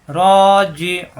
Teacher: উ একালিফ টানকে তিন আলিফ টানতে হবে, লাস্ট হবে সাকিন